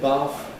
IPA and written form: bɑːθ (bath)